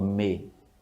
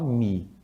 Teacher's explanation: raramente você escuta alguém falando me. A gente fala mi, com i, som de i mesmo.